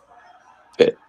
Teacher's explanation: as with English, P, but Pet, fully aspirated.